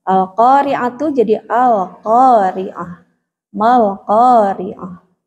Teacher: kalau tak marbutah bunyinya jadi ha sukun